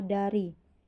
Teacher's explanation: Bunyi yang dihasilkan gigi atas menghasilkan bunyi apikodental, yaitu bunyi yang dihasilkan oleh ujung lidah dengan gigi atas